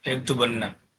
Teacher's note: After omitting na from yaktubuna and adding in na, we get yaktubunna. As a long vowel is not followed by a vowelless letter in Arabic, the long u is shortened